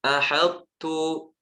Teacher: salah satu ciri khasnya tak itu kan hams ya. Ada sedikit nafas yang keluar.